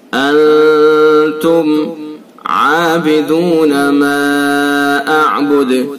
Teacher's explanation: انتم یہ نون ساکن ہے اور اس کے بعد یہ تا ہے، اس کے اندر اخفا ہوگا، اخفاء حقیقی۔ اخفاء حقیقی یعنی اس کو غننے کے ساتھ پڑھیں گے۔ انتم عابدون ما اعبد، یہ میم ساکن کے بعد عین ہے، اس میں اظہار ہوگا، اظہار شفوی اس کو ہم کہتے ہیں۔